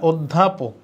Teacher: ধয়ের সাথে জ ফলা মানে ধ দ্বিত্ব হওয়া, কোনো ব্যঞ্জনের সাথে জ ফলা মানে ওইটা দ্বিত্ব হওয়া, ধ দ্বিত্ব হওয়া মানে একটা দ একটা ধ, কারণ ধ হচ্ছে মহাপ্রাণ ধ্বনি, মহাপ্রাণ ধ্বনি দ্বিত্ব হইলে একটা অল্প প্রাণ হয়, মানে তার আগেরটা এবং ওইটা হয়, তাইলে এখানে ধ দুইটা আছে, এটা হইতেছে না, উত্তর হবে এটা অধ্যাপক।